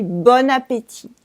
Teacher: you can say bon appétit by making la liaison and not say the T at the end.